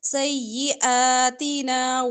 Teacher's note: سیئاتنا سیئاتنا حمزہ کے اوپر کھڑی زبر لمبا کریں گے نا نون زبر الف نا الف مدہ لمبا کریں گے